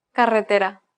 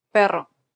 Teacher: which demonstrates sounds that do not exist in english that's right the double r here is a rolled r